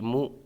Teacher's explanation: یہاں پر حمزہ ساکنہ کو جھٹکا دے کر کے پڑھیں گے